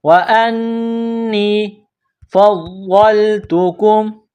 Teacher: نون میں غنہ کریں گے، آواز ناک میں چھپائیں گے